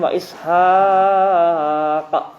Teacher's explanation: Yang pertama mad jaiz munfasil, kemudian diakhiri dengan qalqalah kubra.